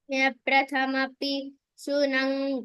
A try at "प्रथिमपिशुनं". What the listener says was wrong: No, it is not prathamapi. Prathima pishunam.